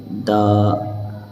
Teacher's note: دال زبان کی نوک اور اوپر کے دونوں دانتوں کی جڑ سے نکالیں گے